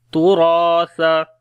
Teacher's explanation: रा और अलिफ दोनों को मोटा पढ़ेंगे और रा को लंबा करेंगे, अलिफ मद्दा है, सा को नरम पढ़ेंगे